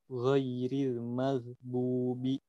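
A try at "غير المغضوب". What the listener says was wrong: Yang penting memang hurufnya sudah dapat, huruf ghainnya, tapi sifatnya masih kurang.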